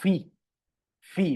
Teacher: de la p en español usamos los labios para pronunciarla y la aspirada que sería una especie de pi pero con más aire